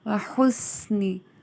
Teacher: سین سیٹی کی آواز آئے گی اس میں